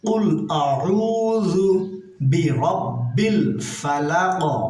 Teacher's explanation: জালটা জিহ্বার আগা সামনের উপরে দুই দাঁতের আগার সঙ্গে লাগিয়ে বলবো